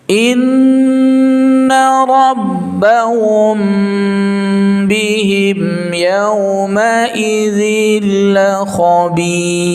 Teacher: Mim sukun bertemu ba itu harus ditahan ya. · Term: Ikhfa syafawi